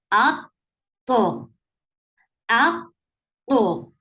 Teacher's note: you are closing the makhraj of ta very firmly up, and then you are creating qalqala at the end, at the last ta, where you are giving waqf and you're giving sakoon at the end.